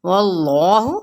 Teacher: اللہ اس میں جلالہ، اور پیچھے واو پہ زبر، تو ہم نے اللہ کا لام پر پڑھنا